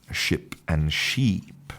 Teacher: in the first one, you have a short vowel, I, ship. And in the second one, you have a long vowel, E, sheep. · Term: minimal pair